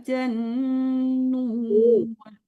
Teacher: Panjangkan dulu jimnya, baru ditasdidkan ke nunnya. Nah, didengungkan nun tasdidnya.